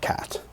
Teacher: It's not just a regular K, it's an aspirated K with a little sound in it.